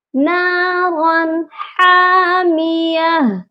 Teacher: ہم نے نون ساکن اور تنوین کی آواز کو صرف ظاہر کرنا ہے، غنہ نہیں کرنا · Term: اظہار حلقی